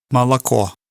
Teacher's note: you can really hear the stress on that last syllable.